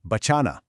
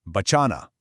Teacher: You hear how that middle cha is drawn out just a little bit?